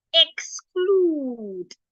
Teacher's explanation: And we have a k after the x. K is a voiceless consonant, so x should sound kus.